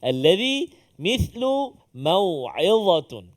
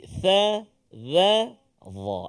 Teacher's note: huruf yang bila kita baca hujung lidah kita keluar sedikit